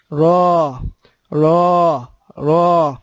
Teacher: زبان لام اور نون میں بدرجہ سیدھی رہتی ہے، لیکن را میں مڑتی ہے